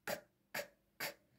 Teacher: الألوفونز بتاعته برضو aspirated، وبتكون في البداية